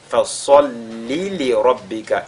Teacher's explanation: la lettre sod, n'est-ce pas, qui est avec at-tafkhim, avec agrandissement